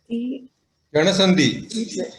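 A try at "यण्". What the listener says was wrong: Yen. It is just yen sandhi, not yana. It is just yen, half nakara. Okay, yen sandhi.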